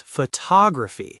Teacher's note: The stress shifts to the second syllable. It becomes photography.